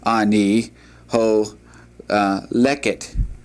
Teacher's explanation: the accent is on the second to the last syllable